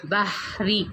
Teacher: جیسے کہ یہاں پہ آپ لوگ دیکھ لیں بحری، یہاں پہ را کے نیچے زیر ہے، تو ایسی حالت میں را جو ہے یہ باریک پڑھی جاتی ہے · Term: را باریک